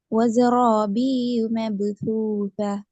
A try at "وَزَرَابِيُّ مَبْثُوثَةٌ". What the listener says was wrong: இதுல இருக்கிற பிரச்சனை என்றால் ஷத்த உச்சரிக்கணும். பியு அல்ல ஷத்து. பியு யால சத்து இப்ப லாமுக்கு சத்து வச்சு எப்படி உச்சரிப்போம்? இல்ல. பாக்கு வந்தால் இப்ப, தேய்க்கு வந்தா இத்த ரெண்டு தான் இல்லன்னு சொல்ல மாட்டோம். ஏன்னா இல்ல என்று ஷத்துக்குரிய உச்சரிப்பை அந்த இடத்துல நாங்க முழுமையா கொடுப்போம். அதே அமைப்புல இங்கேயும் ஷத்துக்குரிய முழுமையான உச்சரிப்பை நான் கொடுக்கணும். எப்படி வரும்? பியு. பியுங்கிறது பிழை.